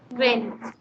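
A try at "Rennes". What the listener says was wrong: N का sound भी देना. N है बीच में. So Ren. It's called Ren.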